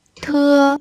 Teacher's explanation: Thưa. Thưa, thưa thực ra nó là chữ T bật hơi thôi, nhưng mà ta đọc thành chữ thở đi cho nó dễ đọc với người Việt chúng ta.